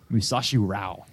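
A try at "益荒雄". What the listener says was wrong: 2 syllables in there.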